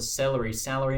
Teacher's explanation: in Melbourne they've got the celery salary merger